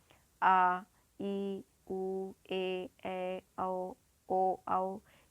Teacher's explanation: दीर्घ स्वर इसे द्विमात्रिक स्वर कहते हैं, क्योंकि इसको बोलने में 2 मात्रा का समय लगता है।